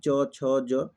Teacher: च, छ, ज, ये तालु से आता है